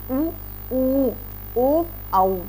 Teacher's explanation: इन्हें जब हम बोल रहे हैं तो हमारे जो होट है उनकी आप देखिएगा उनकी रचना जो होती है वह गोलाई में आ जाती है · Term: वृत्ताकार